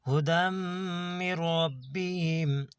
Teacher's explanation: یہاں پہ میم کے اوپر شد ہے، دم یہاں پہ تھوڑا رکیں گے ہم۔ یہاں پہ را کو پر پڑھیں گے، با کو بھی پر پڑھیں گے۔